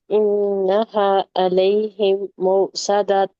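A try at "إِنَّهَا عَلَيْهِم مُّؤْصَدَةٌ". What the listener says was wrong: अलैहिम, मीम मुशद्दद है, गुन्ना होगा. हमजा पे सकून है, यहाँ झटके की आवाज आएगी.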